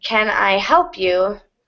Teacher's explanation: help is the main content word or the most important word so it will get the most stress